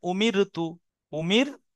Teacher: দেখেন আর মুখটা গোল হচ্ছে না এটার নাম হল বারিক মুনহামির দেখেন র সাকিনের ডানদিকে জের আছে তাই মুনহামির র বারিক হচ্ছে পুর হচ্ছে না